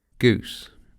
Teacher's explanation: Долгий гласный может еще и дифтонгизироваться и скользить от центра назад.